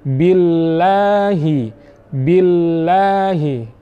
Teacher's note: Cukup kita ucapkan al. Posisi lam ini sama dengan ain, berada di tengah-tengah yang disebut dengan bainiyah antara sifat syiddah dan rikhwah atau rokhawah. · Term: tawassut